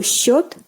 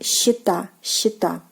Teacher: the yo from the singular form is changed into ye